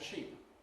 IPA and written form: ʃiˑp (sheep)